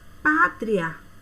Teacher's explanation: O I vai ser uma semivogal e o A vai ser uma vogal. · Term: ditongo crescente